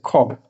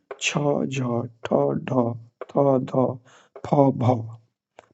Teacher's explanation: हम यदि बोलते हैं ख को, तो हमारी वायु जो है अधिक मात्रा में बाहर निकलती है। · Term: महाप्राण